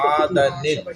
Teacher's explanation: چھوٹا سا نون بنا پڑھا جائے گا. نون قطنی پڑھا جاتا ہے.